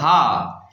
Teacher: اس ہا کا مخرج ہے انتہائی حلق، یعنی حلق کا آخری حصہ حمزہ اور ہا یہاں سے ادا ہوتے ہیں۔